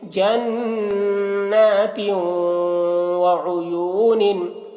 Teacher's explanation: تنوین واو کے ساتھ مدغم ہو رہی ہے تو ناقص طور پر غنہ کے ساتھ میں